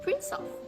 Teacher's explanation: the last sound of the first word, which is s, is combined with the first sound of the next word, which is schwa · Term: linking